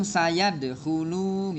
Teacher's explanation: Ah, jangan panjang sanya. Sanya jangan dipanjangin. Langsung sayadkhulu gitu.